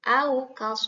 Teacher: waunya mati sebelumnya fathah maka dibacanya harus pendek